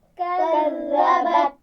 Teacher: اور آخر میں تا ساکن ہے تو اس کا خیال رکھنا ہے اس پر قلقلہ نہیں ہونا چاہیے